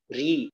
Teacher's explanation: ra ini juga menyimpang apabila berharokat kasrah, menempati makhraj lam ya atau mendekati makhraj lam.